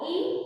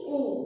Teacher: ઈ, ઉ તો જીભની આગળની સ્થિતિ, જીભની પાછળની સ્થિતિ